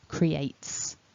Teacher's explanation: that nice ending with the t and the s blending together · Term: ts ending